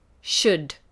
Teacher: There's no L pronunciation there. So it's a silent letter.